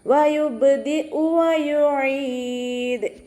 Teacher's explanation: വയുബ്ദി ഉ വയുഈദ് വാവ് ഉച്ചരിക്കുമ്പോൾ ഇവിടെയും ചുണ്ടുകൾ ഒന്ന് സർക്കിൾ ചെയ്ത് കൊടുക്കുക. അയിനിൻ്റെ മഖ്റജ് വസത്തുൽ ഹൽക്കാണ്, സൗണ്ടിന് ഹംസയായി പോവാതെ ശ്രദ്ധിക്കുക. മദ് ആരിദിൽ നിർത്തുമ്പോൾ 2, 4, 6 ഹർക്കത്ത് വരെ നീട്ടി പാരായണം ചെയ്തിട്ട് വഖഫ് ചെയ്യുക.